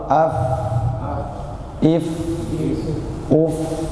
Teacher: tempat keluar hurufnya adalah gigi seri atas bertemu dengan punggung bibir bawah · Nah, ini sukun dari huruf fa, ruh dari huruf fa. Pertama, tipis dan memiliki sifat hams, udara keluar. Dan tidak berlebihan, Pak.